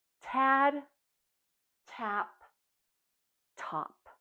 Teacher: Remember, when we make that sound, our tongue is behind our top teeth. It taps down, and we have a quick puff of air. And we know that T is an unvoiced sound. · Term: consonant T